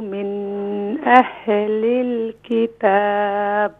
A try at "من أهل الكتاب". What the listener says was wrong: من پہ غنہ مت کریں یہاں پر غنہ نہیں ہوگا یعنی کہ اخفاء نہیں ہوگا بلکہ یہاں پر اظہار ہوگا کیونکہ نون ساکن